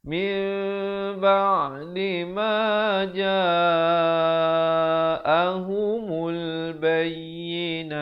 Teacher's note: Tapi bila datang ba jadi mim, bibir itu dia macam nak bersentuhan begitu ya. Biar ada ruang sedikit di antara keduanya dengan kadar 2 harakat. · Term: iqlab